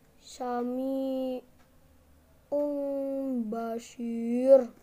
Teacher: apabila nun sukun bertemu ba maka berubah menjadi bunyi mim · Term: Iklab